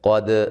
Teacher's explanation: क़ाफ को मोटा अदा करेंगे, दाल पे क़लक़ला करेंगे